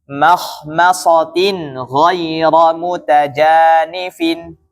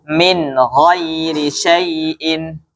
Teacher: apabila ada nun sukun atau tanwin bertemu dengan huruf gha, maka dibaca izhar, dibaca jelas. Nun sukun dan tanwinnya dibaca jelas.